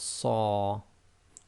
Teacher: the letter Sad also gives a heavy sound with Fathah and gives the sound of Sa.